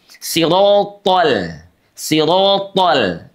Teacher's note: L-nya udah kembali lagi normal tuh. Si tebal, ro tebal, to tebal, tapi lamnya tipis.